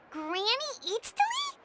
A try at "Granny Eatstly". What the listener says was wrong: Yes, Granny Eatstly. But emphasis on Eatstly, not Granny.